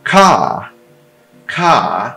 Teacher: R em final de palavra, R seguido de vogal, especialmente em final de palavra, ele não é pronunciado · Esse é um A longo, som do A mesmo, aberto. Ainda com acento, acento agudo, né? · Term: long A